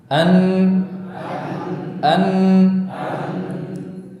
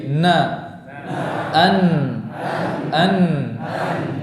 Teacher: Namun huruf nun pengucapannya juga disertai dengan udara yang mengalir dari khayshum, gunnah